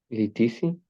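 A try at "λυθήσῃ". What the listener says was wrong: Litisi, muy bien.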